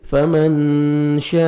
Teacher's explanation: نون ساکن کے بعد شین آ رہا ہے، حروف اخفا میں سے جو 15 لیٹرز ہیں نوز میں ساؤنڈ لے کے جائیں گے